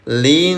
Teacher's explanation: Nun bertasdid warnanya warna pink namanya ghunah. Dengungkan selama dua haraka.